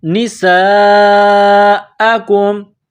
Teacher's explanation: یہ لمبی مد ہے، اس کو 4 الف کے برابر کھینچیں گے